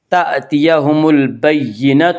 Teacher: با سے پہلے الف لام ہے، اس لیے صرف لام کو پڑھیں گے، الف کو نہ پڑھیں گے۔ تأتیہم البینہ، تو آگے آیت ہے وقف کریں گے گول تا پر۔